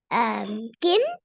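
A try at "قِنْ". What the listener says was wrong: Qaf is always thick and heavy. And the other point, we should read tanween with gunna. Qaf do zir qin.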